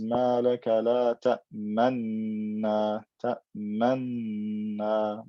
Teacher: So there's two noons, but all of the qurra agree to merge them together. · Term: idgham kabir